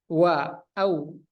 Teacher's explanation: Waw ini sifatnya jahar, nafas ditahan.